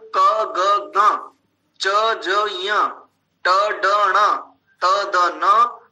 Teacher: ध्यान रखिए, यहां पर दीर्घ अनुनासिक नहीं है, इसमें ह्रस्व, ग्वांग और अनुनासिक, ये इतने सब अल्प प्राण हैं, अर्थात ये थोड़े बल से बोले जाते हैं